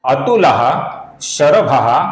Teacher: इसका जो विसर्ग है, इसके आगे श आने के कारण विसर्ग का अपूर्ण श ऐसा उच्चारण हम करेंगे।